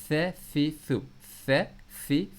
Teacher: ان کو آپ سافٹ پڑھنا ہے اپنی زبان کو باہر نکال کے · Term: حروف لثویہ